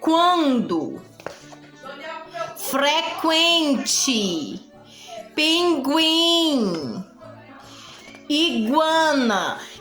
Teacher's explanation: quando você fala essas palavras além de sai o sonzinho pela boca ainda sai também pelo nariz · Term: nasais